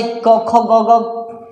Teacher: कंठ की सहायता से क, ख, ग, घ वर्णों का उच्चारण होता है।